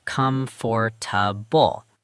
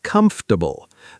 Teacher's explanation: the natural pronunciation across all English accents collapses it as comfortable. Three syllables. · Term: 3 syllables